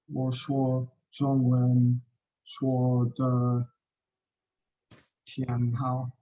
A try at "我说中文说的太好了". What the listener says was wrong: 天 means day. 天, they look very similar there. 天 and Thai. 太好了. Say it again, please.